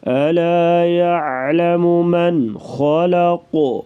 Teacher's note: خا اور قاف کو پر پڑھیں گے، وقفاً یہاں پر قلقلہ بھی کریں گے